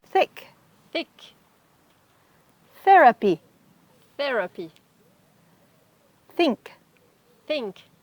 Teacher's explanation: So this is a soft TH that just touches your teeth, but you don't put pressure behind it.